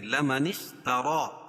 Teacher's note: زبر قائم مقام الف مدہ کہ اس کو ایک الف کے برابر کھینچ کے پڑھیں گے